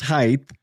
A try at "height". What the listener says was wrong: There's no TH. It's just a T.